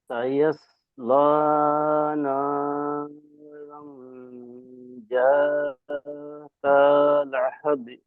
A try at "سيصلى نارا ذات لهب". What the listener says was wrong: শেষে হা একটু চাপ হয়ে গেছে, হা হবে। জি আবার।